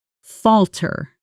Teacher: The stress is on the first syllable and the L sound is short like in the word shall.